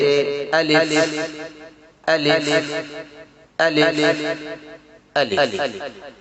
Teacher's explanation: منہ کے خالی حصے سے الف ادا ہوتا ہے، جیسے الف الف الف الف۔